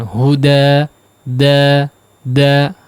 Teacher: Da 2 harakat saja, kemudian jangan diputus dengan hamzah ya, seolah dia menambah hamzah. Huda, da, lepaskan, jangan huda ujungnya ada gitu.